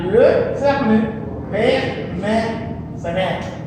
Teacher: Si la pronuncio las tres, cerrado, semiabierto y abierto.